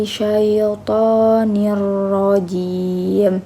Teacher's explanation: dibaca idgham bila gunnah karena kasroh ten bertemu dengan huruf ro. Sedangkan roknya rok tafhim karena berharokat fathah.